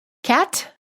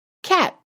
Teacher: You hold the tongue up and no air comes out of your mouth. Listen to the difference between the released T and the held T. The first word you hear has a released T, and the second word has a held T.